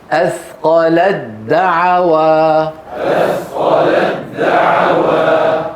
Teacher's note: دعو فاذا وصلناه ما نبدل التاء دال وندم الدال في الدال فيصير النطق دال مشدده